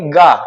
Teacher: हवा नहीं आ रही है तो ग आपका क्या हो अल्प प्राण